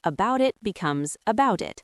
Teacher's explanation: The T in about it often disappears.